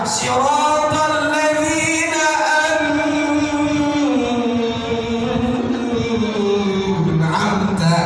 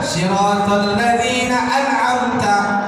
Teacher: Yang benar siratal ladzina an'amta, cepat saja dia. Jelas nunnya mati dan cepat dia berjalan. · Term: izhar halqi